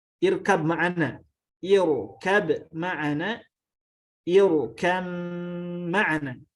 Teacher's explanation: Nah, dinamakan dengan idgham karena tidak ada yang tersisa huruf ba-nya, sifat ba-nya tidak ada yang tersisa, masuk langsung ke mim